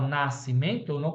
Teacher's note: na palavra nascimento, eu não escuto o som do S.